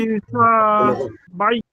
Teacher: হিতে কোন টান নেই, সিনে টান, মানে হিসা, এই সাতে টান, হিসাবাই। হিসাবাই ইয়াসিরা।